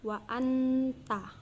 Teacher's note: Dan yang keenam ada ikhfa karena huruf nun sukun bertemu dengan huruf ta dibaca samar dengan dengung dan ditahan selama 3 harokat.